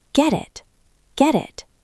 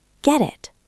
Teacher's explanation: The T in get is between the E and the I, so it becomes a flap T.